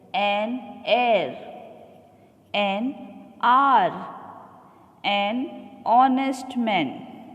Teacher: H is silent and the word begins with a vowel sound